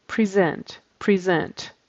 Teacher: that's a z sound in the middle of that word present and make sure you do have sort of a stop sound